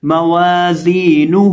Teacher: اب یہاں ہم زا کو بھی ایک الف کے برابر کھینچ کے پڑھیں گے کیونکہ زا کے ساتھ یا مدہ ہے، اور ہا کو بھی کھینچ کے پڑھیں گے کیونکہ ہا کے اوپر الٹا پیش ہے، تو اس کو پڑھیں گے موازینہ، اور وقف کرتے وقت یہاں ہم ہا کو ساکن کریں گے موازینہ.